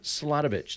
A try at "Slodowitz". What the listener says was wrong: Not witch. No witch.